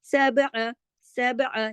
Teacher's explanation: عین کو زیادہ لمبا نہیں کھینچنا کہ الف کا اضافہ نہیں کر دینا ، سماوات، سماوات، ہم یہاں رکے نا، اچھا میم کو الف